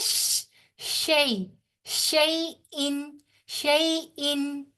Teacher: याए लीन जो है वो बगैर खैंची अदा होती है। शई, शई, शीन जो है इसके अंदर सीटी जैसी फैली फैली सी आवाज होगी, ऐसे करके, जितना हम लोग कहते हैं शई, शई इन, शई इन।